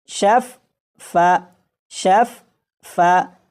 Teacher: ایک مرتبہ فا ساکن پڑھا جا رہا ہے اور دوسری مرتبہ فا متحرک پڑھا جا رہا ہے۔ تو اگر ان دونوں فا کو یہ فا اس فا میں شامل کر دیں تو یہ اس طرح سے لکھا جائے گا کہ فا کے اوپر تشدید آ جائے گی، تو جب اسے پڑھیں گے تو یہ اس طرح پڑھا جائے گا شفا شفا شفا۔